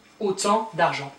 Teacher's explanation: Autant, don't pronounce the T, autant d'argent.